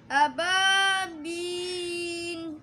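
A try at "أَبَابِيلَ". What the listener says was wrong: रुकना नहीं है, जमाव पैदा नहीं करना, खुल के पढ़ना। आवाज़ आपकी जम रही है, खुल के पढ़ो आवाज़। अबाबील बील ये गलत है। अबाबील सीधे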